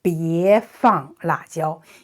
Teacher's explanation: when we say it in a rising tone, it's also very nice and kind, it's proper. So this is a request.